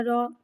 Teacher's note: رو پہ زبر ہے، زبر کو منہ کھول کے ادا کریں گے اور رو پہ زبر ہے لہٰذا رو کو موٹا پڑھیں گے